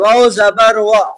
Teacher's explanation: ہونٹوں کو گول کرنے سے ادا ہوتا ہے